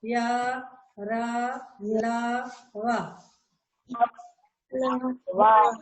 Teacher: अंतस्थ व्यंजन जो हमने अभी बताया था, ये संख्या में 4 होते हैं, या, रा, लावा। इनके उच्चारण में जिह्वा यानी जीभ मुख के किसी विशेष भाग के निकट तो आती है, किंतु उसे स्पर्श नहीं करती।